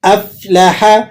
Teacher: قلقلہ صغیرہ، ٹھیک ہے. افلح، فا کو آپ نے ہونٹوں کو ذرا سا گول کر کے اس کو ادا کرنا ہے